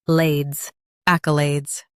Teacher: Stress AK and keep alades light.